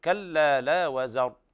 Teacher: أيضا الراء كلها مفخمة